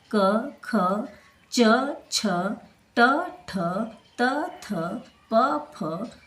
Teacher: जिस वर्ण के उच्चारण में स्वर यंत्र में कंपन नहीं होता है उसे अघोष वर्ण कहते हैं